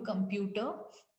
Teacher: तो कम उतना ज्यादा लाउड में नहीं सुनाई दे रहा जितना प्यूटर सुनाई दे रहा है। और प्यूटर में भी पूरा TER तक नहीं सुनाई दे रहा। · PUT is the basically syllable which we are putting the stress on, या हमारा पिच वहां पर थोड़ा सा हाई हो रहा है, ठीक है। The pitch of a stress syllable is usually higher.